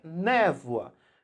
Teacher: você tem o O e o A, mas o som, na verdade, é um som de U. Porque a gente pronuncia névoa. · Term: semivogal e uma vogal